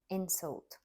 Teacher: insult stress on the first syllable is a noun